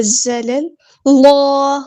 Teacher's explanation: زلل اللہ، یہ جو لام ہے نا اس کو موٹا پڑھنا ہے. زلل یہاں تک باریک، پھر اللہ اس کو موٹا پڑھنا ہے